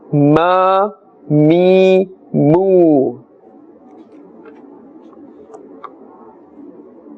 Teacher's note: And mim, which is the next one, must be pronounced from the dry part of the lips.